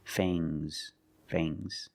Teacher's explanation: And the S is making a zebra sound, Z, but it's soft.